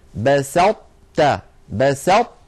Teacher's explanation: وفي قصة ابني آدم في المائدة: لئن بسطت إلي يدك، بسطت، بسط، أطبقنا اللسان على طاء من غير قلقلة، تاء فتحنا على تاء، فلا نحن أظهرناها فقلنا بسطت، ولا نحن أدغمناها إدغاما كاملا فقلنا بسطت. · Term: الإدغام الناقص